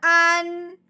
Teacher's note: نون ساکن پہ غنہ نہیں کرنا، بغیر غنے کے اظہار کے ساتھ پڑھنا ہے